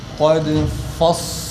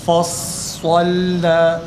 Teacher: Fa ince, sad kalın, lam ince.